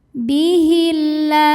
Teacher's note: Sebab ada alif lam yang menghadapi huruf syamsiyah yaitu lam. Maka cara bacanya alif lam tidak dibaca atau disebut dengan idgham syamsi.